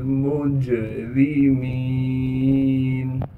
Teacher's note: जीम पर क़लक़ला किया जाएगा यानी आवाज़ को हिलाएंगे। रा के नीचे ज़ेर होने की वजह से रा को बारीक करके पढ़ेंगे। मीम को आगे या मद्दा से मिला देंगे।